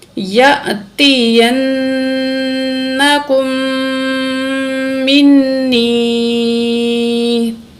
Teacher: تو یا ساکن ہے، اس سے پہلے زیر ہے، حروف مدہ ہے، ایک الف کے برابر یا کو کھینچ کے پڑھیں گے